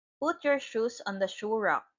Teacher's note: It is a falling intonation because it is a command.